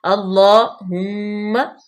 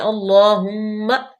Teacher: اللہم، ہا مضموم ہے اور انتہائی حلق سے بھی ہے۔ اللہم، میم مشدد، غنہ پیدا کریں گے، تھوڑی دیر کے لیے رکیں گے